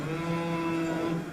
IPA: m